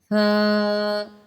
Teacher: ایک الف کی مقدار فا کو کھینچ کے پڑھتے ہیں۔